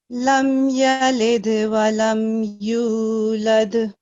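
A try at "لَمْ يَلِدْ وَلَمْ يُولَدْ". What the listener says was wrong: जी बिल्कुल ठीक, माशाल्लाह, बहुत अच्छा।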